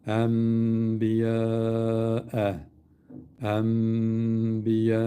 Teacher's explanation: N demiyoruz. M diyoruz. Bununu mime çevireceğiz.